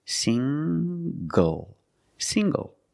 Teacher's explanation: the n g makes the nasal sound plus the hard G